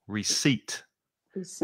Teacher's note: And the stress is on the second syllable.